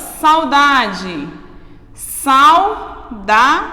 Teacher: eu tenho encontro de uma vogal e uma semivogal elas precisam estar juntas na mesma sílaba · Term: ditongo